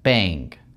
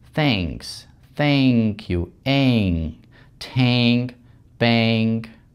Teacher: Видите, как мы двигаем язык выше, и он практически упирается у нас туда, в небо, и на долю секунды буквально звук этот удлиняется. Звук перед NG также превращается в glide sound, то есть у нас добавляется звук A. То есть, например, привычное слово bank звучит как bang.